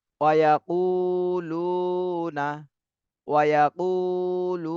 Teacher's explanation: উতে এক আলিফ টান দিতে হবে পেশের বামে জজমালা ওয়াও। লু, এটাও এক আলিফ টান দিতে হবে মদের হরফ।